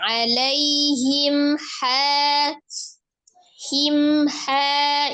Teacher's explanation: mim sukun bertemu dengan huruf ha izhar syafawi dibaca jelas tapi alirkan mimnya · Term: izhar safawi